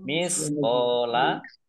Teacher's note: fathah alif mat tobi'i, panjang 2 harokat